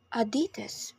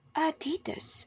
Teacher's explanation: Americans say Adidas with stress in the second syllable while in the UK it's pronounced Adidas with a stress in the first syllable